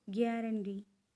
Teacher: has stress on the third syllable